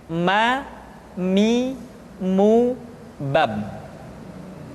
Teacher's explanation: Selanjutnya huruf ma diucapkan dengan cara merapatkan dua bibir.